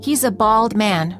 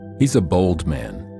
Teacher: the first one has a word with an ah sound, and the second one has a word with an o.